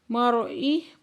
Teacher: را ساکن سے پہلے زبر ہے تو را کو پورا آواز سے پڑھیں گے